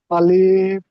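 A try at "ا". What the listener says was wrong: আলিফ টান হবে না, আলিফ। আলিফ।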